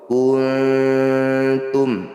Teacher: Bunyi nun sukunnya dengungkan 2 harokat. Ketika dengung lidah bergeser menuju huruf ta. Pergeseran lidahnya sedikit saja atau dekat, makanya disebut aqrab. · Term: ikhfa aqrab